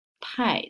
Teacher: The character after 不 is the last tone, 太, so it's going down. So we're going to raise 不 into 不.